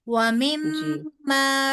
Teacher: काफ पे कलकला भी होगा और नून के ऊपर खड़ी ज़बर है तो वो दो हरफ लबा लंबा भी होगा।